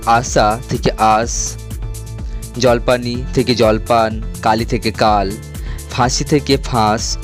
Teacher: শব্দের অন্তঃস্থিত স্বরধ্বনিগুলি লোপ পেয়েছে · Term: অন্ত স্বরলোপ